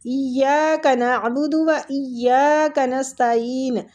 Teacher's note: عین حلق سے وسط الحلق سے نکلے گی اور عین کے آگے یا مد بھی ہو رہا ہے